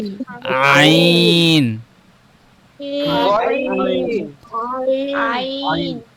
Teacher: গলার মাঝখান থেকে আওয়াজটা আসবে